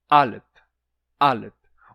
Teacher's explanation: tem uma oclusão antes do A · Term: oclusão glotal